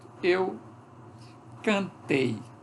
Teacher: O A assimila o traço de altura do I. Quando o A assimila o traço de altura do I, ele se transforma em E. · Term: alçamento